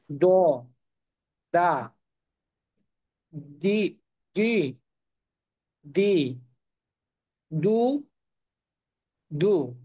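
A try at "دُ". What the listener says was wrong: পেশ জের প্রায় একই রকম হয়ে গেল। তো এখানেও পেশের এবং জেরের, জেরেরটা হবে দজের দুই,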